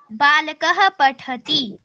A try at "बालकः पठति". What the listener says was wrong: ती को दबाते नहीं है, पठति ऐसे नहीं बोलना है। सामान्य रूप से वैसे ही उच्चारण करना है जैसे पूर्व वर्णों का किया जा रहा है।